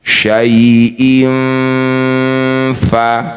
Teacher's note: bunyi kasr tanwin dengungkan dua harakat ketika dengung ujung gigi atas sudah nempel di perut bibir bawah syaiin [Tertawa] fa ya jangan lupa dengungkan dua harakat karena tanwin ini hukumnya sama dengan nun sukun ya lain dalam tulisan Ya, sama dalam suara tanwin dan nun sukun didengungkan dua harakat. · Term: ikhfa